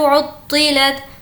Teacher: तो की आवाज़ को पुर पढ़ेंगे